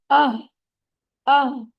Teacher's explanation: हा सीने की तरफ हलक के निचले हिस्से से अदा होता है। हा को हमने छुपाना नहीं, ज्यादातर क्या होता है, हा की आवाज छुप रही होती है, बाकी आवाजों में दब जाती है, तो ऐसा नहीं करना।